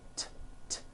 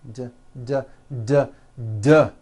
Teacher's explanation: T, t. Now don't change a thing with your mouth. Just take the same sound and add voicing. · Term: D sound